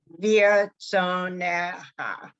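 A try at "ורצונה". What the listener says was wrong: Okay, the tso is a syllable by itself. Veer, tso, na, cha.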